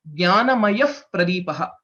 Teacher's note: The F sound, whatever you hear, that is a Ardha Visarga and that is Upadhvaniya.